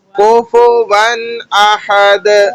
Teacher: ون پہ غنہ نہیں ہونا ہے، یعنی کہ ناک میں آواز نہیں جائے گی ، اس کو سادہ پڑھنا ہے کیونکہ آگے حرف ہلکی آ